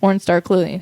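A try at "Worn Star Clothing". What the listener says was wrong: It always sounds like you say porn star clothing. W-O-R-N. Not porn star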